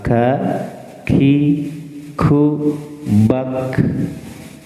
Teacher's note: Kaf itu aksol lisan, cuma agak depan daripada qaf.